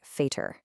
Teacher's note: The V that sounds like an F.